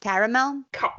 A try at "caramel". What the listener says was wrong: There's an extra A in there.